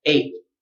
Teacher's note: Your tongue should come up though to make the T, but then you just decide not to say the T at the end. Mm-hmm. So put your tongue up, but don't let the air out.